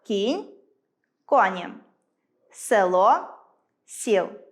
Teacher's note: Перший випадок чергування звуків [о] та [е] з [і], як-от у словах кінь–коні, село– сіл.